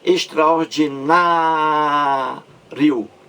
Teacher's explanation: Palavra paroxítona, a sílaba mais forte na penúltima sílaba, na.